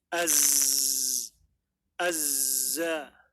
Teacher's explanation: atau suara burung kicauan burung ini adalah dinamakan dengan safir jadi seperti ada suara lebih suara tambahan yang dia mirip seperti siulan